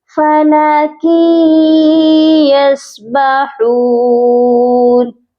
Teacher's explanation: جب ہم کاف کی تنوین کو یا کے ساتھ ملائیں گے تو یہاں پر ادغام مع الغنہ کا قاعدہ ہو رہا ہے. بہت سے لوگ یا مشدد کو دیکھتے ہیں تو فَلَكِ، یا کے ساتھ سختی سے نہیں ملایا جائے گا تنوین کو بلکہ یہاں پر غنہ کر کے ہم ملائیں گے.